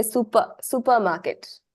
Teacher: so that is ignored in Japanese so it becomes Su so two sounds Su and Pa are elongated · you don't say super the r is not pronounced